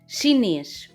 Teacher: chinês o e é tónico e fechado